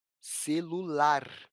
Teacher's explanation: A palavra celular tem como sílaba mais forte a sílaba lar. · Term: sílaba tônica